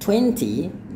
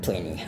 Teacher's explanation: when we have an N and a T together, we drop the T sound.